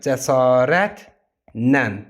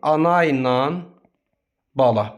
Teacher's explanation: Cəsarətlə sözündə zərf düzəldən lalə şəkilçisi bütün məqamlarda nan nən kimi deyilir.